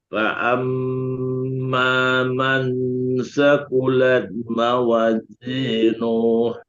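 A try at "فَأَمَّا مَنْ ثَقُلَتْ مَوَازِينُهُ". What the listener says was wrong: Nuh jangan panjang. Mawazinuh. Tapi Buya harus jelaskan Z-nya. Mawazi. Z.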